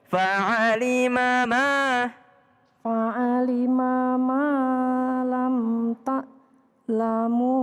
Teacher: Ma yang pertama pendek, ma yang kedua panjang.